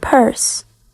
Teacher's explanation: in the word purse, the p at the beginning is aspirated. After releasing the sound p, there is a brief moment of silence before the vocal cords beginning to vibrate for the next vowel.